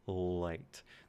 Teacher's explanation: There's way more airflow through the sides of the tongue to make light. And this, of course, is the L sound.